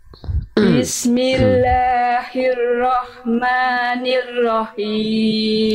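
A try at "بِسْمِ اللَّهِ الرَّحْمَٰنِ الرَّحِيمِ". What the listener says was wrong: Sekali lagi kurang Bunda, haknya kurang. Hak yang tadi yang dilafalkan lagi. Him. Him. Bismillahirrahmanirrahim. Oke, nanti dilatih lagi hak kecilnya, jadi masih kurang pol hak kecilnya. Kadang-kadang dia nggak jelas bisikannya.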